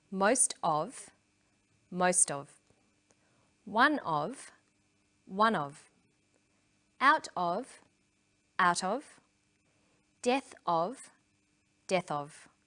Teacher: in sentences these phrases will usually become linked together